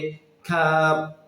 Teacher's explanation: উপরের তালুর সঙ্গে মিলিত হয়ে উচ্চারিত হবে কফ হরফটি হচ্ছে কাফ জিহুবার গোড়া থেকে একটু আগে বাড়িয়ে এই হরফটি উচ্চারিত হবে